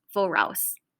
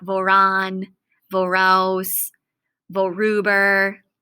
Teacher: You see in woraus and woran here, that little R I put in the middle. So because there's two vowels in a row and it's hard to say woraus, you just put a little R in the middle so it's easier to pronounce